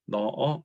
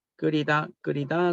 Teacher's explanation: 히읗은 용언이 활용할 때 우리 히읗으로 끝나는 용언이 발음되기 어렵고 그대로 그냥 탈락하는 현상입니다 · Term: 히읗 탈락